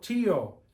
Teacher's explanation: it breaks up the I and the O and makes two separate vowel sounds two vowels but i o one vowel sound okay uh I